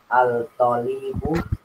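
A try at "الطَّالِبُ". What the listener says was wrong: Iya, jangan alnya sudah nggak kelihatan lagi ya. Ini syamsiyah. At-tolibu bukan al-tolibu. Jadi langsung at-tolibu.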